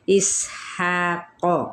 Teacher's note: اب یہاں پہ ہا وسط حلق سے ہے اور یہاں پہ بھی الف مدہ کا قائم مقام ہے، ایک الف کے برابر، قوف پر ہے، حروف متعالیہ میں سے ہے، اس کی حرکت کو کھینچیں گے نہیں۔